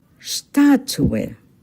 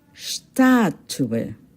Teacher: Take note, the stress is on the first syllable